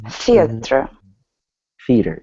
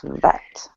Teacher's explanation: One is unvoiced and another one is voiced. Right. Voice is where you feel the vibrations.